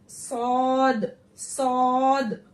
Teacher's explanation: जबान की जड़ को तालुक की तरफ बुलंद करते हुए मोटी आवाज में सौद सीटी निकालते हुए